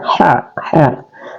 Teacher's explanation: Ha adalah huruf wastul halqi. Dia keluar di pertengahan tenggorokan. Ha. Dan dia juga adalah mad tabi' karena ada tandanya, ada huruf fathah yang horizontal atau berdiri ya.